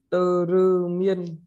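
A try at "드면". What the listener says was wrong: Tơ là có phụ âm đáy là l thì không có, vẫn là không có phụ âm đáy nhé. Cho nên chỉ là tơ miên thôi.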